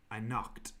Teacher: so you're getting the t sound for knocked similar to worked